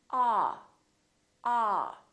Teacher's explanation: your jaw is all the way down and your lips are kind of oval shaped like an egg ah don't push your lips forward too much don't say oh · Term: ah sound